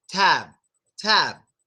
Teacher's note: Our lips closing is what's stopping the sound. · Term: B sound